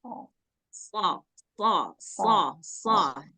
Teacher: Istia tebal sedangkan Sin sifatnya istigfal is ringan nah nah jadi mengucapkan SH agak terangkat sedikit pangkal lidah sehingga bunyinya jadi berat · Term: Shad, huruf shad